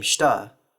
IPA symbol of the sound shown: ʃt